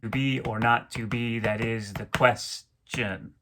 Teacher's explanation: iambic pentameter with an extra unstressed syllable at the end of the line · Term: feminine ending